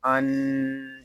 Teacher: حمزہ نون زبر ان، یہاں الف کے اوپر کوئی حرکت نہیں ہے تو اس پر ہم زبر لگا کر پڑھیں گے، اور نون مشدد ہے، اس کو غننے کے ساتھ ادا کریں گے